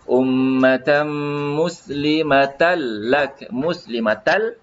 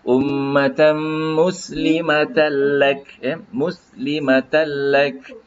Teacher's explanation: Jadi cara nak bacanya seolah-olah lam mati dan lam yang kedua berbaris ya, tidak perlu kita dengungkan dia ya. Ummatan muslimatal lak, muslimatal ya, yang lam pertama yang ada tanda mati dan lam kedua yang berbaris. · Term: idgham bila gunnah